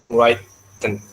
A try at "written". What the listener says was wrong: Lo, W kan Miss sudah bilang nggak dibaca. W-nya tuh hilang, jadinya cuma written. W hilang Jadi dimanapun kalau ada W itu hilang. Sama W sama K hilang.